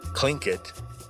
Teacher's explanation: a more English-friendly pronunciation, Tlingit, kind of changing that T to a K sound